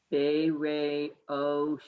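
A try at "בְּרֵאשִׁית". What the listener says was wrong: No O. The aleph is silent, and then you just do this part and then this. Bereshit.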